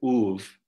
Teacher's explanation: the vowels are clean and monophthongal, so they just have one part